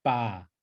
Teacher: it's not a hard P sound like it's not a paw there's no there's no like puffy sound it's not PA but it's ba